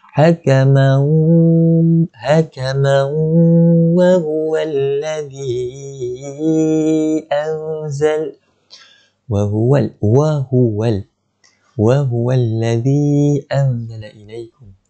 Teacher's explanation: Cara bacaan dia dengung 2 harakat. Kita kena dengung, masukkan mim tu ke dalam huruf waw. Lepas tu kita kena dengung 2 harakat. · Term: idgham bighunna